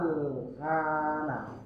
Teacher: Jadi panjang dulu 6 harakat panjang. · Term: mad lazim kilmi mukhaffaf